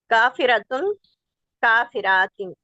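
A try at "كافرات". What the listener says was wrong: صرف جمع، صرف پیش والی نہیں ہے، زبر زیر والی پڑھے ہیں. کافرتن ہو یا کافرتن ہو تو جمع کیا بنے گی؟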